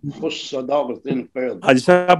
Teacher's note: इन हरूफ को अदा करते वक्त जबान की जड़ तालू की तरफ बुलंद हो ताकि हरूफ पुर पड़े जा सके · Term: इस्तेला